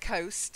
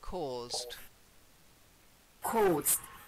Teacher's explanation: It's not the long O, it's or.